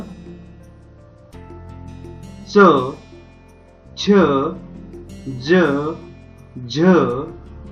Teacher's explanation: ज्या वर्णांचा उच्चार करताना जिभेचा स्पर्श टाळूला होतो त्यांना तालव्य वर्ण असे म्हणतात